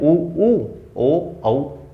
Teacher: अधरों की आकृति के आधार पर यानी कि हमारे होठों की आकृति कैसी है वर्णों को बोलते समय, तो इसके 2 आधार हैं, व्रताकार, व्रत यानी गोल। होठ हमारे गोल कब हो जाते हैं, जब हम बोलते हैं उ, ओ, औ, और बाकी जब वर्ण बोलते हैं तब गोल नहीं होते हैं, इसलिए इनको हम कहते हैं अव्रताकार।